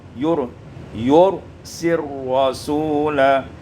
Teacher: idghamkan lam pada ra dengan idgham kamil